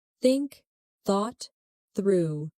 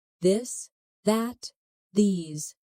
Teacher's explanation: For example, the th sound in think or this. Put your tongue between your teeth and push air out for think. For this, your tongue touches the same position but with your voice turned on.